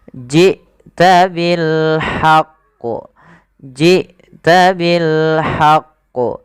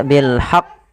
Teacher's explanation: Di sini ada bacaan qalqalah yang di mana huruf qaf ketika dia sukun qalqalahnya qalqalah kubra